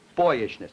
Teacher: I would have to have primary stress on boy and weak stress on the rest of it